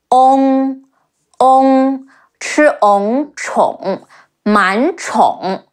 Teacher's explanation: sure your mouth shape is rounder and make the sound longer